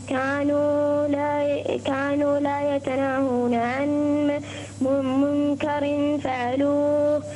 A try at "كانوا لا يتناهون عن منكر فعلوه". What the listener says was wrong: رقق الراء. رقق الراء.